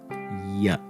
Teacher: Ya is straightforward. It's a palatal. It's voiced, not aspirated. There's a vibration in the voice box, no puff of air.